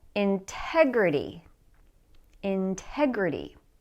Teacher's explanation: at the next word think about where the stress is integrity so the stress is on the second syllable